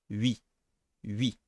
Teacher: When you say these two vowels together, all that happens is that your mouth, your lips, they are making a smile, so to speak. They are unrounding. Oui. And your tongue keeps in the same spot.